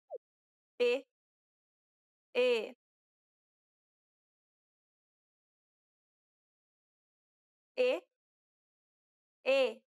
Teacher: It's similar to the E in the word ne. However, try not to carry over the I sound too much. This is known as the closed E sound in Portuguese.